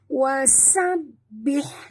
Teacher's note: Di sini ha pedas. Jangan tebal, ringan saja.